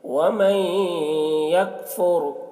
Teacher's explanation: ومن، یہاں پر نون ساکن کے بعد حروف یومن میں سے یا ہے، نون کو یا سے ملا کر غنہ کے ساتھ پڑھیں گے، اس کو ادغام ناقص کہتے ہیں۔ ومن یکفر، را کو پر پڑھیں گے، را ساکنہ سے پہلے پیش ہے